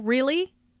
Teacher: notice the rising intonation on really this shows that the speaker is surprised